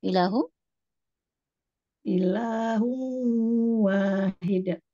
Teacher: di sini hu ditahan sampai ke hidung